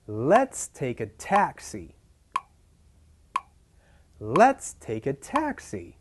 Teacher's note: we have 5 syllables stressed on the first and the fourth